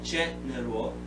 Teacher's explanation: Entonces esta de aquí tiene menor fuerza de voz, y la pronunciación aquí es gen. Aquí hay un schwa sound que normalmente se elimina, general.